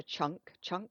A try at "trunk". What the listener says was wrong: Yeah, we say trunk, trunk, chest. guys say chunk, chunk. combined the word chest with trunk and made it chunk.